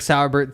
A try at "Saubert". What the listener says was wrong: Just Saubert. I don't think there's an R in there before the one in Bert. You're thinking too much Todd Sauerbrunn.